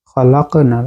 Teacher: খালাক হচ্ছে শব্দের মাঝখানে কলকলায় সুগরা বা ছোট কলকলা